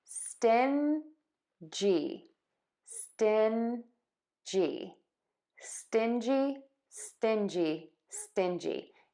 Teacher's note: And we're stressing the stin. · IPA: ˈstɪnʤi